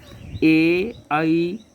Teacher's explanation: ए, ऐ का उच्चारण कंठ और तालु से किया जाता है। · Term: कंठ तालु